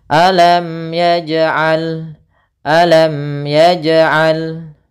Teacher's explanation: Kesalahan yang terjadi yang pertama adalah tidak memantulkan jimnya, yang kedua adalah dia menambahkan hamzah. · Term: qalqalah